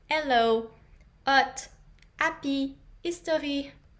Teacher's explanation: The H sound alone is silent in French, so we often just drop it in English